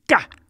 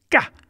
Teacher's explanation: It's a cerebral K, which means it's ka. If you can pronounce K without any breath coming out of your mouth, then you will get what that sound is. It's like the sharpest sound that you can make, sort of ka.